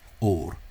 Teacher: the word for gold in Irish or is just a single tap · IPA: /o:ɾ/